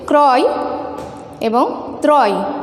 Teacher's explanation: র ফলা থাকার জন্য এখানে অরক্ষিত হয়েছে, ওকার পরিণত হয়নি।